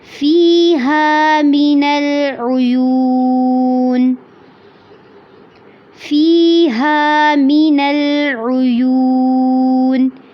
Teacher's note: فی میں یا ساکن سے پہلے زیر ہے، اس کو لمبا کرنا ہے. ہا کو بھی لمبا کرنا ہے. · ہا کو بھی لمبا کرنا ہے. من العیون میں یو یعنی کہ واو ساکن سے پہلے پیش ہے تو اس کو لمبا کرنا ہے